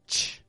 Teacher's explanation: the CH sound releases a quick burst of air through the teeth, whereas the SH sound is a little bit softer and stretches out more than the CH.